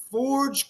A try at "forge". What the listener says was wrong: Okay, forge, you said forget. If you put a T at the end, it means to forget.